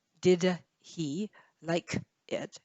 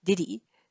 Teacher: it notice it's not did he like it it's diddy so the h disappears and then d links